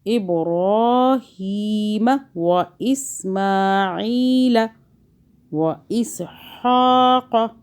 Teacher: با پہ قلقلہ کریں جھٹکا